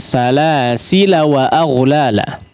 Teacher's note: ya kalau diwasalkan tidak dipanjangkan